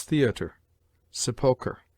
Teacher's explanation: RE at the end of some words derived from the Latin or French is pronounced like a weak ER